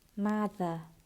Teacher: Để lưỡi hẳn ra ngoài giữa hai hàm răng, dùng họng